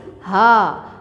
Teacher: हा हमारे अक्सा हलक सीने की तरफ, अक्सा हलक ये होता है यहाँ से हा निकलता है, ये वस्ते हलक है बेटा और ये अदना हलक है जो हमारे मुंह की तरफ होता है, ये इब्तदाई हलक कहलाता है।